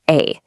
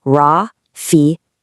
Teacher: Just think of the A in the word father. That nice open a sound.